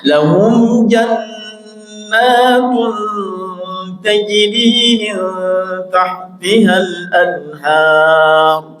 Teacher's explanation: Al-anhar roknya tafkhim. Anhar ya, tebal, dibaca tebal ya. Anhar roknya tebal, tafkhim.